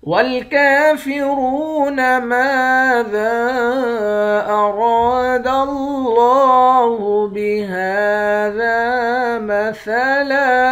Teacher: والکافرون ماذا اراد اللہ بہذا مثلا، لفظ اللہ کے لام کے اوپر کھڑا زبر ہے، لفظ اللہ کے لام کو ایک الف کے مقدار کھینچ کر پڑھیں گے۔ لفظ اللہ کے لام کو بھی موٹا پڑھیں گے۔ ہا کے اوپر کھڑا زبر ہے، ایک الف کے مقدار کھینچیں گے۔